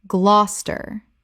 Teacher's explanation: 2 syllables only. The middle syllables disappear completely.